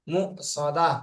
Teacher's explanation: মু সদাতুন এটা কিন্তু অফ করলে এই তাটা কিন্তু হা হয়ে যাবে